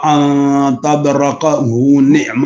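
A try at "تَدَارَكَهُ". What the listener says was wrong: تدرکہ نہیں، دال کے اوپر جزم ہے، تد کے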